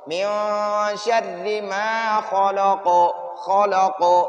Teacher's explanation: خا کو پر پڑھنا اور خلق قاف پر قلقلہ کرنا